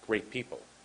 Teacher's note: In American, we have very short, soft T's at the end of words